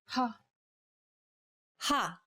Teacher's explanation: the sound of the letter H in the English word had saying this sound involves a forceful expulsion of air